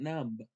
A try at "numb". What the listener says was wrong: Not numb. You don't say the B. Remember, it's silent.